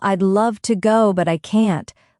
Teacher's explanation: Listen to how love and can't stand out. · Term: rhythm